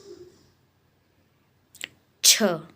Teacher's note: इसका उत्तर है तालव्य। तालु से बोला जाता है छ